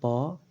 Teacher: तो ओठ सट रहा है, ओष्ठ